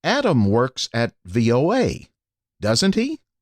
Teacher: If the speaker is trying to confirm information, the tone rises.